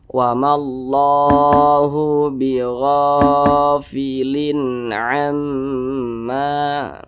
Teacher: tanwin berjumpa dengan huruf ain hukumnya izhar halqi, dibaca jelas, tidak berdengung. Jadi dibaca pendek saja.